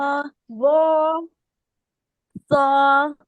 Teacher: زبان کی یہ جو یہی والے جو دانت ہیں نا اس کے سے ہماری زبان کی نوک لگ رہی ہے اور زبان کی جڑ اٹھ رہی ہے ساتھ میں